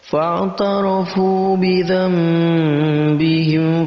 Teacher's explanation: Yang tadinya nun mati ataupun yang tadinya tanwin kita rubah menjadi apa? Menjadi mim. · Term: iqlab